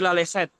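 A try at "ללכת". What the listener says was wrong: Lalehet. Coba lagi lalehet. Ya, bukan pakai C ya. Bukan pakai C. Lalehet. C itu kan caranya orang bule, caranya orang berbahasa Inggris untuk mengalih hurufkan. Jadi KH itu mereka tulisnya CH, tapi sebenarnya bukan C ya. KH ya, lalehet gitu ya.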